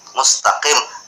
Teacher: letaknya ketika menyebut huruf qaf itu letaknya di pangkal lidah